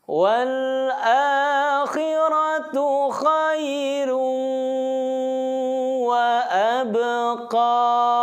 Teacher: Dalam hal ini dhammah tain. Khairu, ditahan 2 titik, suaranya masukkan ke dalam rongga hidung. Kaidah tajwidnya idgham bigunnah.